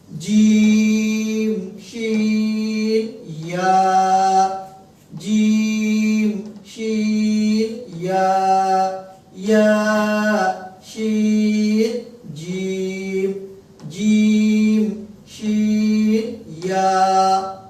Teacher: জিম শিন আর ইয়া হচ্ছে জিহ্বার মধ্যখান, জিহ্বার মধ্যখান বরাবর উপরে তালু